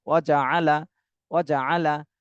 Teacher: এখানে কোনো টান নেই, প্রত্যেকটাই হরকত, প্রত্যেকটা হরফে হরকত রয়েছে, দ্রুত বলতে হবে